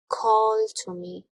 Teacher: down here anaphase the noun a Dactyl has got three syllables it starts with a stressed syllable and is followed by two unstressed syllables